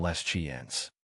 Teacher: In les chiens, the s you see at the end of les disappears completely.